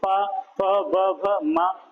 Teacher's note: होठ है दोनों एक दूसरे से स्पर्श कर रहे हैं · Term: ओष्ठ ध्वनि